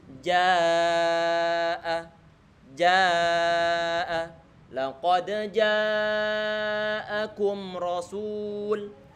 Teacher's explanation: setelahnya ada hamzah dan hamzahnya di sini bertemu dengan alif dalam satu kata, maka jangan sampai dipanjangkan 2 harokat saja. Karena dia sudah bukan mat yang normal, tapi matnya adalah mat wajib muttasil.